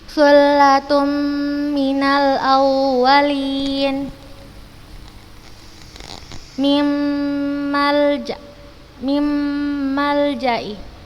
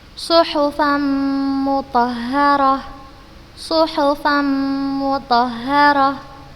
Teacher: Di sini tanwin, ini huruf mim. Kita masukkan ke huruf mim, kemudian kita berikan gunnah yang dipanjangkan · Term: idgham bi gunnah